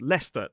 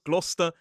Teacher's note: We don’t pronounce the “r” as an isolated sound in a modern British RP accent. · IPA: /stə/